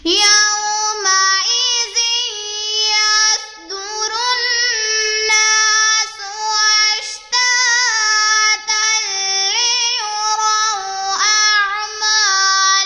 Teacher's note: واو ساکن سے پہلے یا کے اوپر زبر ہے تو یہاں پر واولین کا قاعدہ ہو رہا ہے. اسے ہم کھینچ کے نہیں پڑھیں گے بلکہ نرمی سے پڑھیں گے. ذال کو نرمی سے پڑھیں گے.